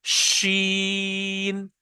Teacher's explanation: आपकी जो मुंह की एयर है, इट स्प्रेड्स, वो फैलती है, तो आवाज आती है शीन, ठीक है ना, शीन, शीन ऐसे, ठीक है ना। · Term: तफशी